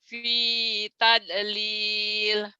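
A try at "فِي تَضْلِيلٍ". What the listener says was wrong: Dalnya salah. Jangan tod juga. Fi. A dulu. Fi taublil. Taublil. Taublil.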